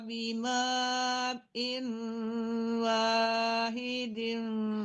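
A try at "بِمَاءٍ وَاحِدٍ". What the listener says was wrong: Wah, itu didengungkan juga ke hidung ke waw ya. Dilebur ke waw. Bima wahidin. Wah, itu ke waw semua ya. Karena depan hurufnya waw.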